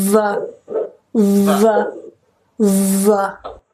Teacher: এরপরে ভা সাউন্ড, ভা, এটা কালার দেখেই বুঝতে পারছেন এটা ভয়েস সাউন্ড, এটা একটু ভাইব্রেশন হবে ভোকাল কর্ডে